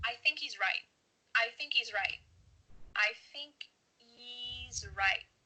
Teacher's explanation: there's no H happening here